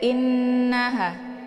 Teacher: ditekan kemudian ditahan suaranya dua harakat sambil dileburkan suara ke dalam huruf na Ya ataupun didengungkan [Musik] kemudian ditahan dulu jangan jangan langsung dilepas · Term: ghunnah musyaddadah